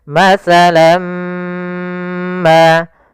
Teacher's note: tanwinnya masuk kepada huruf mim, tinggallah bunyi suara huruf min. Maka masalam ma, ya, kita namakan dengan idgham bi gunnah pula.